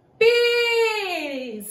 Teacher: Pires, a sílaba mais forte é o pi, é a penúltima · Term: paroxítona